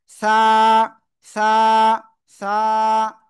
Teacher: এই যে 3 নোক্তা, জিহ্বার আগা উপরে 2 দাঁতের আগায় লাগান, লাগান লাগান, লাগিয়ে নরম করে এক আলিফ টেনে পড়বো।